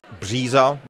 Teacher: you would have the voiced variant of the ř